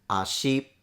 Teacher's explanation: The word for leg, which is pronounced ashi, a as a low tone, shi as a high tone. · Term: pitch accent